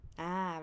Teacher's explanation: it starts from low pitch up to high pitch ah rising right so low so low from here so my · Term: rising tone